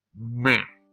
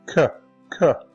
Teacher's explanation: to produce the M sound, air had to have come up through the nasal cavity. But to produce the K sound, air had to go up through the oral cavity.